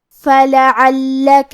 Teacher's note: کلمت فلعلک میں فا پہ لام پہ اور عین پہ تینوں پہ زبر ہے، تو ہم یہ تینوں زبر کو برابر سے ادا کریں گے۔ حرف اللام کو 2 حرف کے برابر پڑھیں گے کیونکہ اس پہ تشدید ہے۔ کلمت باخع کے آخری میں حرف العین پہ تنوین پیش ہے، پھر حرف النون ہے۔